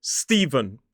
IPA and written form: ˈstiːvən (Stephen)